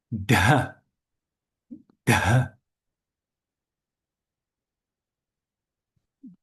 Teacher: Another letter which you don't see that much is the aspirated da. Da is a retroflex sound.